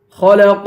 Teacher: خا کو پر پڑھیں گے، قاف کو بھی پر پڑھیں گے اور قاف پر قلقلہ کریں گے